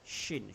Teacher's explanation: tengah-tengah lidah naik ke atas langit-langit. Bukan ujung lidah ya, kerana shin.